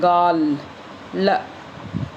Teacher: वह ध्वनि जिसका उच्चारण करते समय जीभ तालू से चिपक जाती है तथा निकलने वाली प्राणवायु जीभ के दोनों ओर से गालों को स्पर्श करते हुए बाहर निकलती है ना, उसको लय बोलते हैं।